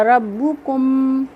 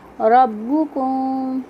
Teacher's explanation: जैसे रब्बुकुम, यहाँ पे हमने ऐसे नहीं पढ़ा रब्बुकुम, आवाज़ को ज़ाहिर नहीं किया बल्कि मीम की आवाज़ को थोड़ा सा छुपाया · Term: इख्फा शफ़ी